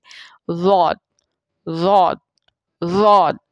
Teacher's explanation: ज़ुबान की एक साइड जो है वो दाढ़ों के साथ लगती है, पीछे वाले जो दांत हैं दाढ़ें। चाहे वो दाएं तरफ से आपकी ज़ुबान उसको लग रही हो दाढ़ों को या बाएं तरफ से लग रही हो, एक साइड से लग रही होती।